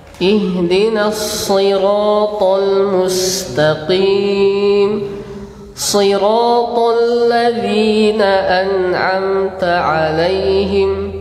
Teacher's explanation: sifatnya itbaq. Suara sangat tebal.